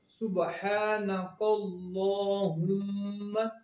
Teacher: میم مشدد اور نون مشدد پہ ہمیشہ غنہ ہوتا ہے، یعنی اس کی آواز جو ہے ناک میں ہی رہے گی، کیونکہ غنہ ناک سے ہی ادا ہوتا ہے۔